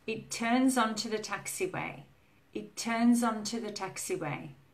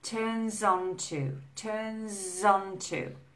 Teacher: the S of turns and the O of onto link together. So we lose the sound. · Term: linking